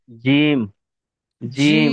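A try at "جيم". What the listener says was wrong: জিম টান দেন।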